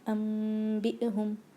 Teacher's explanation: نون کو غنہ بنا دیں گے اور اس کے بعد اس کو میم میں بدل جائے گا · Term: اقلاب